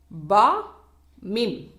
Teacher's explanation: இவை இரு உதடுகளுக்கு நடுவில் இருந்து உச்சரிக்கப்படுகின்றன